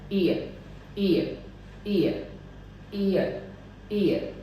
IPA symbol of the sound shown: ɪə